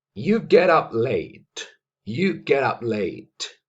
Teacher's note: T se conecta con la vocal U y se pronuncia como si fuera una sola palabra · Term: connected speech